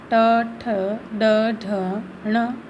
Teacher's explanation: मूर्धा जो है वो तालु से भी ऊपर गहरे गड्ढे नुमा भाग होते हैं और हमारी जो जिह्वा है वो इन वर्णों का उच्चारण करते समय उस मूर्धा भाग को स्पर्श करती है, इसलिए ये वर्ण मूर्धन्य कहलाते हैं।